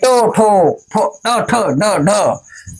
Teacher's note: हमारी जिभ्या जो है मूर्धा को स्पर्श कर रही है